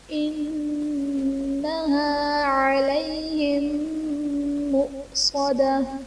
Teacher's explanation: علیہم میم ساکن کے بعد دوسری میم ہے، تو یہاں پر ادغام شفوی کا قاعدہ ہوگا، میم ساکن میں ہم غنہ کر کے پڑھیں گے · مؤصدہ میں حمزہ ساکنہ ہے، یہاں پر حمزہ ساکنہ کو ہم جھٹکا دے کر پڑھیں گے